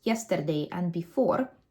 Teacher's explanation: his R's are slightly trilled, not as much as they would be if he was speaking Russian, but just enough to make his speech sound more Russian than English.